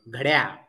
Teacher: अर्ध ड वाचायचं. घड या म्हणलं की ड पूर्ण होतं, मग त्याला अर्ध करायचं. घड्या असं म्हणायचं.